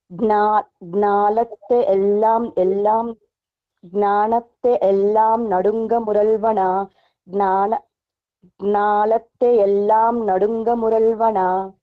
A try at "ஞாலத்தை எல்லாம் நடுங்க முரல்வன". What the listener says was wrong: It's not gna, it is nya. Nya. Cha cha ja ja nya. No, that is what nya.